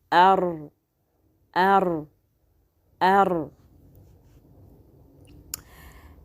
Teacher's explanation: la pointe de la langue sous le point d'articulation Noun, s'appuyant contre la muqueuse palatine et faisant vibrer le dos de la langue, forma le point d'articulation Ar, Ar, Ar. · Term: la lettre Ra